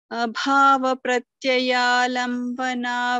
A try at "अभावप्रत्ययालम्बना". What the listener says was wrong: Only a few things like abhava pratyaya. Try to stress on the pa when these two consonants come together. And also very few places. I think only two places the mahaprana was not heard.